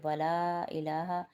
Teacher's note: لا کو 5 الف کی مقدار کھینچیں گے کیونکہ یہ مد متصل ہے، اور الہ کے لام کے اوپر کھڑا زبر ہے، اس کو 1 الف کی مقدار کھینچیں گے۔ · الہ کے لام کے اوپر کھڑا زبر ہے، اس کو 1 الف کی مقدار کھینچیں گے۔ ایک الف کی مقدار میں بتا چکی ہوں، ایک انگلی کھولی اور بند کی، اسی طرح 5 الف کی مقدار 5 انگلیاں کھولی اور بند کی۔